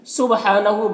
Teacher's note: با حروف قلقلہ میں سے ہے تو با میں قلقلہ ہوگا، یعنی اس کی آواز اپنے مخرج سے ٹکرائے گی۔ اور ہا میں کھڑا زبر ہے، ایک الف کے برابر کھینچیں گے۔